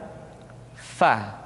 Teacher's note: Berikutnya, pengucapan huruf fa. Diucapkan dengan menyentuhkan ujung dua gigi seri kita bagian atas dengan bibir bawah bagian dalam. Fa. Seperti kita mengucapkan huruf F di dalam huruf Latin.